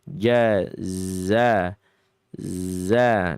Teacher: bukan dibaca dalam keadaan hams tapi dalam keadaan jahar. Ja za za dia zayyun.